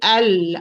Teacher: It's al, lam mufakhama. You see, back of the tongue is higher, epiglottis is withdrawn or backward towards the wall, to the throat wall